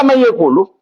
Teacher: Nafas harus menyentuh tengah-tengah lidah dan tengah-tengah langit-langit. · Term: idgham nakis